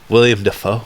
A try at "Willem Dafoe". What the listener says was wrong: Willem Dafoe? His name is not William. It's a Willem. It's Willem. No, Will.I.am spelled out William. Willem. There's no Will.I.am has I and A at the end. There's no I and A at the end of Willem.